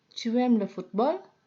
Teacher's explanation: Jadi hanya intonasinya yang dinaikkan. Komposisi kalimat seperti bentuk kalimat afirmatif. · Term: menaikkan intonasi